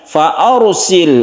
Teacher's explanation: Kemudian rabbikum fa arsil, ada mim bertemu dengan fa yang kita sebut dengan idhar syafawi, tidak didengungkan. Fa arsil, ada sukun ra, sebelumnya ada fathah, ini kita baca tebal, atau disebut juga ra ini dibaca tafkhim atau tebal